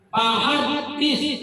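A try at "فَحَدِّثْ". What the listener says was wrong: Katanya Allah, salah itu. Jadi menyebutkan fa, bibirnya jangan bersentuhan, dia ditinggi kenanya fa, dan ada nafas keluar. Hembus dia, fa.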